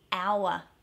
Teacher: we don't pronounce the R, but we might add in a wa for emphasis. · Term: Australian R